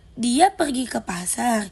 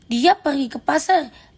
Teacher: intonasinya naik di akhir, menandakan pertanyaan